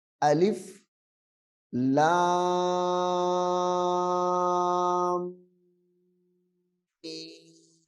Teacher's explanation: یہ جب حرف میم کے اوپر آئے تو میم کی آواز کو ناک میں لے کے جانا ہے، یعنی غنہ کرنا ہے اس پہ.